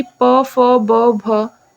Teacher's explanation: फ का जो उच्चारण है वो होठ से हो रहा है, जैसे कि प फ ब भ, लिप्स क्या होता है दोनों टच होता है, ठीक है। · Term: ओष्ठ्य व्यंजन